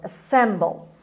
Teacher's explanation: خب باز هم میبینید استرس روی S هست on the second syllable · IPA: /əˈsembəl/